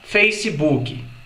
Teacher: o costume que a gente tem de embutir por exemplo a letra i em palavras que não tem I logo no final